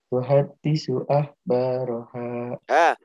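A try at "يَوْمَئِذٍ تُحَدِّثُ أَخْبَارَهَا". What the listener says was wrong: Tuhadditsu pakai ha, tuhadditsu akhbaruha pakai pakai kha, akhbaruha.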